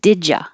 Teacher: It's a yes no question, so it'll go up all the way. Did ya? Instead of did you, you can say did ya.